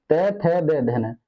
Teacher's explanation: जीभ हमारी जीभ किस पे लगती है दांतों पे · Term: दंत्य